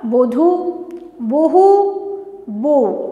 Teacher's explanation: লাস্টে হলো কি হটা উড়ে গেল, গিয়ে এলো কি বউ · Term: অন্ত ব্যঞ্জনধ্বনি লোপ